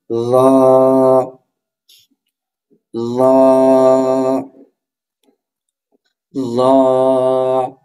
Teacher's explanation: র হরফটি কোথা থেকে উচ্চারিত হবে, জিহ্বার আগা, সামনে, উপরে, দুই দাঁতের আগার সঙ্গে লাগাইয়া সেখান থেকে উচ্চারিত হবে র। র মোটা হরফ, র র র।